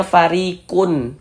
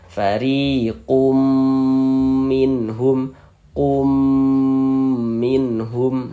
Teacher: Kemudian kita gunnahkan. Jadi di bagian kumnya itu ya, suaranya itu kita tahan, kita gunnahkan, kita panjangkan sejenak ya, sepanjang 2 harokat.